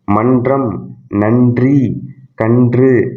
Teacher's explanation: நாவின் நுனி மேல்வாய் அன்னத்தின் முன்பகுதியை தொடுவதால் நகரம் பிறக்கிறது. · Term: 2 சுழினா